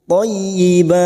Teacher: Masuk pada huruf ya yang bertasdid, hanya masuk tanpa ditahan lama-lama, tanpa mendengung.